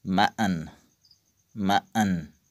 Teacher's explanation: First point is, in many accents of English, t is replaced by a glottal stop when it occurs before an alveolar nasal in the same word